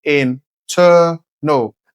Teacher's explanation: Place the stress on the second syllable, internal. That's where it's longer, louder, and clearer.